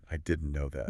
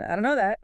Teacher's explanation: Often the D and T sounds merge or weaken sounding like done or similar. And know that links closely.